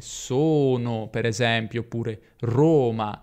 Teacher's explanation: anche la o può essere chiusa come la e